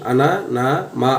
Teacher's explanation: ముక్కు సహాయంతో పలికే అక్షరాలని అనునాసికాలు అంటారు. ఇవేంటంటే వర్గంలో ఉన్న చివరి అక్షరాలు వర్గ పంచమ అక్షరాలని అనునాసికాలు అంటారు.